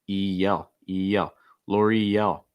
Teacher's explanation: I think a key thing here is the EL. So linking that E sound with the L sound, with that slight Y.